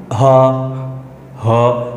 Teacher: আলাদাভাবে যখন তুমি হ উচ্চারণ করবা, দেখবা হ উচ্চারণ করতে গিয়ে তোমার কণ্ঠনালী একটু সময়ের জন্য বন্ধ হয়ে যাবে। দেখবা হ হ খেয়াল করবা যখন খোলা মুখ করে তুমি হঠাৎ করে বলে হ, দেখবা গলার মধ্যে একটু বাধা পাচ্ছ, তারপরে কিন্তু বেরিয়ে যাবে। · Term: কণ্ঠনালীয় ব্যঞ্জন